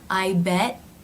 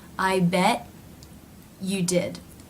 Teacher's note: The tongue is moving into position, which is cutting off the airflow, and that stop is part of the T. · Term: No release